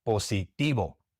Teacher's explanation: There are some very small parts of Latin America where they pronounce the V as we pronounce it in English. But in the great majority of Latin America and in Spain the V is pronounced like a B